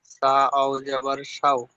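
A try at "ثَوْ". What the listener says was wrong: সা ওয়াও জাবার শাও নয়, শাও নয়, সাও সাও। তাহলে সা সা, শাও বললে তখন শিনের উচ্চারণ হবে। এখানে সা ওয়াও জাবার সাও, সাও।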